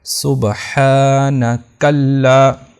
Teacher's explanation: اب یہ جو کھڑی زبر ہے تو اس کا یہ مطالبہ ہے کہ مجھے لمبا کیا جائے، ہا کو لمبا کیا جائے گا 2 الف کے برابر